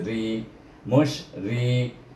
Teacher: ra baris di bawah baca dengan nipis ri, mush ri.